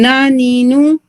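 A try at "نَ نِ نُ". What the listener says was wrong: But again the tone faster. Na ninu. And all three should be equal. Nu. Single harakat. If you remember the sheikh when he was showing like this and this goes up. Like this is tone, it really goes up. Na ninu. Like when you say noon fatha na.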